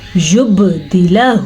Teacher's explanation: اکثر لوگ پڑھ لیتے ہیں یبدلہ, غلط, دال زیر دی, لام زبر لا, یبدلہ, با پہ قلقلہ بھی ہو رہا ہے